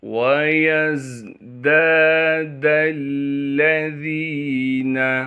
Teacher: وَيَزْدَادَ الَّذِينَ، یہاں پر بھی واو کو بغیر کھینچے پڑھنا ہے، یا کو زا سے ملائیں گے کیونکہ زا ساکن ہے، زا کو سختی سے ادا کریں گے۔ دال کے بعد الف مدہ ہونے کی وجہ سے دال کو ایک الف کے مقدار کھینچیں گے، پھر اس دال کو ہم لام سے ملا دیں گے کیونکہ لام پر تشدید ہے، ذال کو باریک کر کے پڑھنا ہے اور ذال کو ایک الف کے مقدار کھینچیں گے۔